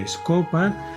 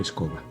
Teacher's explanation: la P, que ya sabéis que es una oclusiva sorda, pasaría a la oclusiva sonora correspondiente, que es la B. De ahí entonces nos sale directamente escoba.